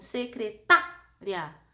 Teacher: teu aparelho fonador põe tanta força para pronunciar o tá, que o ri e o a saem juntos. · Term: ditongo